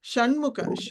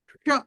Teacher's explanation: ష ట వర్గం ఎక్కడి నుంచి పలుకుతామో ష అక్కడి నుంచి పలకాలి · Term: మూర్ధన్యం